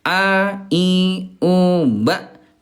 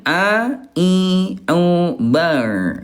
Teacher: huruf hamzah tempat keluarnya di pangkal tenggorokan ya, dan ain di tengah tenggorokan